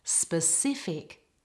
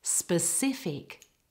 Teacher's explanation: In the word specific, the stress is on the second part.